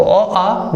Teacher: और यह स्वर्ण या वर्ण हमारे अ तथा आ स्वर हैं, ठीक है। तो अ आ जो है इनका उच्चारण स्थान कंठ हो गया, ठीक है। कंठ वर्ग से इनकी ध्वनि निकली।